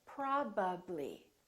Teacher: lips right so if i say i'm putting my lips together both my upper lip and my lower lip are working · my lips have to open and close three times